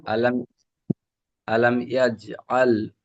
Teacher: ইয়া জিম জবর ইয়াজ, জিম কলকলা হবে